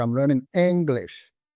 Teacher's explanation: I'm learning English stressing on the word English it means that I'm learning English not French or German